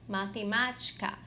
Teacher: divisão silábica matemática em que eu tenho última penúltima antepenúltima sílaba que a sílaba má temos aqui como sílaba tônica